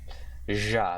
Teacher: So it's a voiced palato-alveolar. I guess you can maybe say it's post-alveolar too because of this.